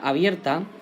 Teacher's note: Por ejemplo, si voy a la palabra abierta, vemos que en la sílaba abierta hay una sutil fuerza que cae en la E, es decir, en la vocal abierta. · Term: diptongo